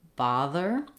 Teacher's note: it into a word like bother i need my voice on my tongue is between my teeth and the air is flowing you can just begin with that sound if it helps you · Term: th sound